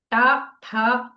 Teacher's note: ఆ భాగము మూర్ధ అంటారు మామూలుగా మూర్ధ అంటే తలకాయ తలకాయలు నోటిలో ఉన్న తల భాగము అని కనుక్కోవచ్చు అక్కడ ఇది సామాన్యంగా చిన్న పిల్లలకు త్వరగా రాదు ఈ శబ్దము ట ఠ కొద్దిగా నాలుక తిప్పి కొద్దిగా పైకి పెట్టి చెప్పాల్సి వస్తుంది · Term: మూర్ధన్యాలు